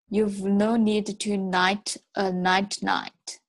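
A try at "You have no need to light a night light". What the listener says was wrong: Okay, every one of those L's you pronounced as an L, as an N. So try it, focus on that L. That's why this sentence is so difficult, right?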